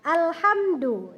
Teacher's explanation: qalqalahnya tidak terpantul karena dalnya berharokatkan dhamma